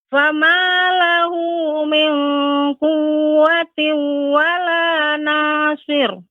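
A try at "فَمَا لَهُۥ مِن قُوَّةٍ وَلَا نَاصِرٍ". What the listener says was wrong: Ya, ra tidak boleh tebal Ibu. Nasir. Nasir.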